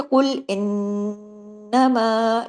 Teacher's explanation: नून पे तशदीद है, नून पे बड़ा गुन्ना हुआ